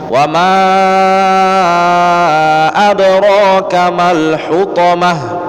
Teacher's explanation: ketika bertemu mad jaiz dibaca panjang 4 harokat